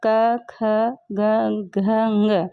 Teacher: क वर्ग के 5 वर्ण क, ख, ग, घ, ङ, इनको हम कंठ से बोल रहे हैं तो ये कंठ वर्ण कहलाते हैं।